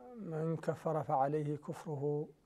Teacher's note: من هنا قبل الفاء يحكمها الإخفاء